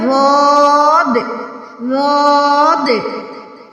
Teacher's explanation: اس کے بعد ہے ضاد، ضاد، یہ اکیلا حرف ہے اور یہ ادا ہوتا ہے حافیہ سے، اس کو کہتے ہیں حروف حافیہ، زبان کی کروٹ اور اوپر کی داڑوں کی جڑ سے ادا ہوتا ہے ضاد